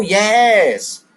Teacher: if you ever say that word, yes, your voice should be going up. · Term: intonation